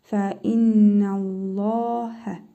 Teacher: Sonra Allah ləfzi gəlib. Özündən əvvəl üstün hərəkəsi gəldiyinə görə Allah ləfzindəki ləm hərfini qalın la kimi tələffüz edirik.